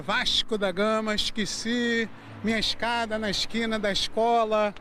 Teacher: Esse S meio misturado com X, trocando o E pelo I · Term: chiado carioca